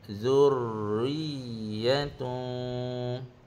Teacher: Riya itu bersifat rokhawah, mengalir, dan berlaku an-nabr, tekanan. Riya satu harakat kat situ, bukan zurriyatun, tak boleh laju.